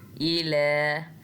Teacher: लाम को एक अलिफ जितना लंबा खींचना है, इसके ऊपर खड़ी ज़बर है।